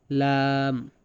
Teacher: জিহ্বার আগার কিনারা সামনের উপরের দাঁতের মাড়ির সঙ্গে লাগাইয়া